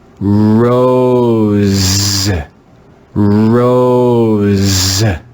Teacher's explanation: let's read this word together with the voiced s sound z